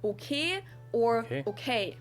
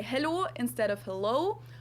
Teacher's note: pronounce your vowels more like just one letter just one sound straighter